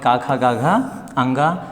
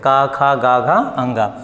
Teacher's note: क ख ग घ अंग इसको हम कहां से बोलते हैं बच्चों? कंठ से बोलते हैं। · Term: क वर्ग